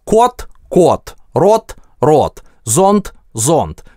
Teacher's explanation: В русском у нас д оглушается в конце слова.